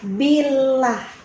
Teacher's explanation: Lafzul jalalah pada kalimat Allahnya ini tipis karena kan dia ada kasrah.